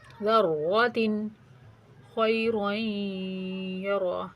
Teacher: ادھر بھی تنوین کا یا کے ساتھ ادغام ہوگا غنہ کے ساتھ